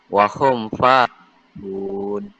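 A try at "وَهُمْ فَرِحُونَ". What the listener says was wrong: Kenapa fa tu ada jadi dua harakat pula? Dia satu harakat je. Wahum farihun. Wahum farihun.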